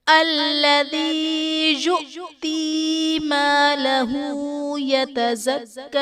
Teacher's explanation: یؤتی میں حمزہ ساکنہ ہے، اسے جھٹکا دے کر پڑھیں گے